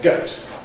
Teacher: We’ve now changed the diphthong, so instead of /oʊ/, it’s now /əʊ/. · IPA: gəʊt